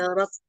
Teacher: Hanya sodnya saja yang tebal, tapi dalnya tipis.